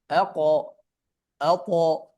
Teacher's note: এই দুটি হারফ কলকলা দিয়ে পড়ার সময় ফাতহা এর দিকে মাইল হবে অথবা ধাবিত হয়ে উচ্চারিত হবে, অর্থাৎ একটু উপরের দিকে থাকবে। কেননা, কারণ এই যে কফ ত দুইটা হারফ তো আবার কি হেভি লেটার, এই জন্যই।